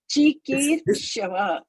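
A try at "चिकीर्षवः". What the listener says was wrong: Yeah, this is not small. This is big. Cikīr. Kīr. Yeah, you have to give your full. Yeah, Kīr. Cikīrṣavaḥ, and not che or it's chi, and this is Kīr, right? Chi. You see, this is chi, small. This is Kīr. Ra is here on the top. Cikīrṣavaḥ.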